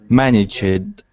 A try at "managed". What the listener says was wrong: Okay, you're adding the id ending, and it's not an id ending, it's a d. Managed. Managed. Like that. Managed.